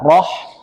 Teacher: roh ini termasuk huruf tebal ya, maka mulut dibuka, roh, kemudian masuk ha ya, dibaca halus roh ya.